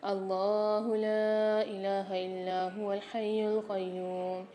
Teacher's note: اللہ کے لام کو موٹا کر کے پڑھیں گے اور کھینچ کے بھی پڑھیں گے۔ لا الہ میں مد آ رہا ہے اور لام کے اوپر کھڑا زبر آ رہا ہے، دونوں جگہ کھینچ کے پڑھیں گے۔